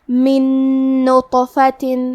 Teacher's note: کلمت من کے آخری میں نون ساکن ہے، پھر حرف نون ہے کلمت نطفہ، نون حروف الادغام بغنہ میں سے ہے تو ہم یہ حکم کو غنہ اور تشدید کے ساتھ ادا کریں گے